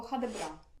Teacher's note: Мені воно звучить як дійсно одне слово тобто норвежці люблять отак інтонаційно все це зливати